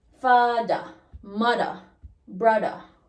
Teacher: the voice th becomes d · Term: voiced th